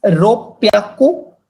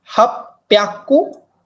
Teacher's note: H sound gets changed to P sound